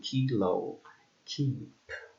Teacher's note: is a voiceless velar and stop sound